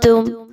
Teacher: تم، میم ساکن کے بعد حرف عین آ گیا، اظہار شفوی کریں گے۔ تم پہ میم ساکن پہ آپ نے غنہ بالکل بھی نہیں کرنا